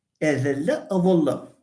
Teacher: they are the same, but they differ just in pharyngealization